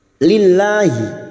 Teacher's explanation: lam jalalah yang didahului kasrah kita baca tarkik atau tipis